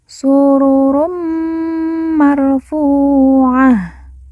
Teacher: Run bertemu dengan mim yang bertasydid, maka run kita leburkan langsung masuk ke huruf mim, lalu kita tekan, kita tahan 2 harokat dan didengungkan.